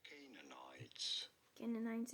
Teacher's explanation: You do want to stress on the first syllable, on the K syllable.